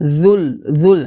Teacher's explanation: জালটা জিহ্বার আগে উপর দাঁতের আগার সঙ্গে লাগিয়ে পাতলা করে উচ্চারণ করতে হবে